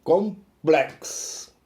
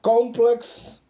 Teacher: sílaba tônica no plex para americano